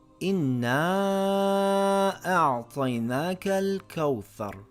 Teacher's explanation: we lengthen the long vowel for 2 or 4 counts. But make sure this mad is always shorter than the connecting hamza of mad. So this would read إِنَّا أَعْطَيْنَاكَ الْكَوْثَرَ.